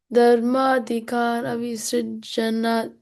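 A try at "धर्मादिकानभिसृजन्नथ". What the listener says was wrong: Yeah, it's a double na there, double n there. Abhisujannatha.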